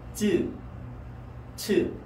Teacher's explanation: 쯔, 츠 지금 혀는 계속 윗니와 아랫니를 치면서 소리를 내고 있는 거예요. 쯔, 츠 대신 이 츠는 쯔보다 입김을 더 내면서 소리 내면 됩니다.